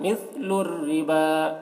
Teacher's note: بیع، مثل، سا کو باریک، مثل الربا، را کو بھی باریک پڑھیں گے کیونکہ را کے نیچے زیر ہے. با کو کھینچ کر پڑھیں گے اور یہ واو کو نہیں پڑھا جائے گا